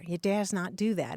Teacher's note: especially in dialects where you don't have such a pronounced R. You dares not do that. If you say that quickly, sometimes it can come out as dassent.